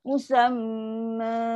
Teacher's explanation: Dengunglah dengung yang sempurna, paling sempurna, panjang dengung dia. Musamma. So dia akan bunyi dia lembut aja.